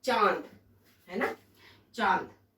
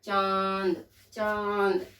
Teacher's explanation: अनुनासिक में आता है चंद्र बिंदु, और ये जो ध्वनि निकलती है वो हमारे नाक और मुंह से, दोनों से ही निकलती है। जैसे हम लिखे चांद, है ना, चांद, तो चांद में आप देखो चंद्र बिंदु आता है, चांद, चांद, गले से भी निकल रहा है और नाक से भी निकल रहा है, तो चांद।